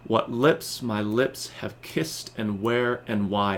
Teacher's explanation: unstressed + stressed unstressed + stressed unstressed + stressed five times over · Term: iambic pentameter